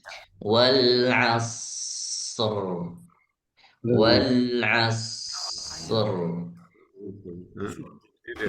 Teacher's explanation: So-nya sifat hamasnya lebih ditahan lagi, lebih lama lagi.